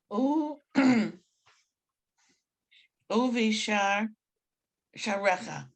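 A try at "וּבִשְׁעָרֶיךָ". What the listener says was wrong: uvish recha. Don't forget to stop, uvish, stop.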